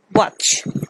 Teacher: It is bilabial sound. Bilabial and velar sound, where both lips and tongue raised at the back. So the wa, watch.